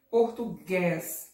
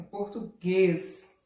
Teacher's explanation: Ó, olha como é que o E fala. É um som mais fechado